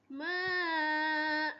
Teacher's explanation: dal adalah huruf qalqalah. Jadi kita baca dia berdetak bila berhenti. Ikut Ustazah baca.